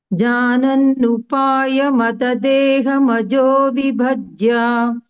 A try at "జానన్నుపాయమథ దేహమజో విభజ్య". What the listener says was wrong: అథ, అథ అథ అనేది మహాప్రాణం చెప్పండి అని చెప్పాను. జానన్నుపాయమ,